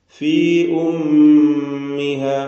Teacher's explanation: മീം മുശദ്ദ മണിച്ചുകൊണ്ട് ഉച്ചരിക്കണം രണ്ട് ഹറക്കത്തിന്റെ അളവിൽ അതിന് ഉന്നത്ത് കൊടുക്കുക